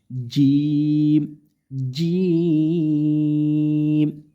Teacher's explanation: জিমটা জিহ্বার মাঝখান থেকে কি করব? শক্ত করে উচ্চারণ করব। এবং আমাদের জিহ্বার মাঝখানটা উপরে যে আমাদের কি আছে? তালু আছে সেখানে লেগে যাবে